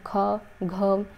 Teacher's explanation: ख जब हम बोल रहे हैं तो लास्ट में ह की भी ध्वनि आ रही है और हम जोर से बोल रहे हैं मतलब कि मुख से हमारा ज्यादा वायु निकल रहा है तो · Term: महाप्राण